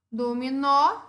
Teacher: Então, eu acentuo. Dominó, a sílaba tônica é a última e termina em vogal. Então, ela é acentuada.